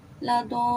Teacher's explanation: واو ساکنہ اس سے پہلے پیش ہے، واو مدہ ہوا